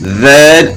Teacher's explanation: ذال کا مخرج جو ثا کا مخرج ہے وہی ذال کا مخرج ہے, یعنی زبان کی نوک اور ثنائے علیا کے کنارے. اور زا جو ہے وہ زبان کی نوک ثنایا سفلا یعنی سامنے والے نیچے کے دو دانت جو ہیں ان کے ساتھ زبان کی نوک لگے گی, اور معمولی سی اوپر بھی سامنے والے اوپر کے دانتوں کے ساتھ بھی معمولی سی لگے گی.